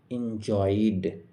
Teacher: অয় সাউন্ডটা হচ্ছে ডিপথং, অয় সাউন্ডের পরে ইডি রয়েছে, তাই ইডি এর উচ্চারণও এখানে ড এর মতো হবে